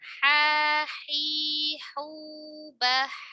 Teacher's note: Ha dia lebih lembut ya. Tidak seperti ain tekanannya.